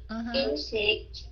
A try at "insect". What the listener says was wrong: Insect. Cái insect nó hơi cứng tại cái âm k ở phía sau insect, chứ không phải insect. Cái insect.